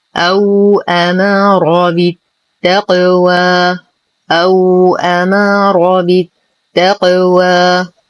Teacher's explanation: نقلقل القاف قلقلة صغرى مع إعطائها درجة التفخيم